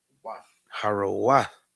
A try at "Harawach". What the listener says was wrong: No, that's a ka at the end. Harawach.